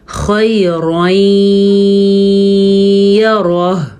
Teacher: ایک تو یہ کہ خو پر پڑھے جانے والے حروف میں سے ہے تو خو کو پر پڑھیں گے. یا لین ہے, را کو پر پڑھیں گے کیونکہ را کے اوپر دو زبر ہیں. اگر را کے نیچے دو زیر ہوتی تو را باریک پڑھا جاتا.